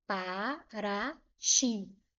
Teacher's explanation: Para ti, o ti é a sílaba mais forte. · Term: sílaba tônica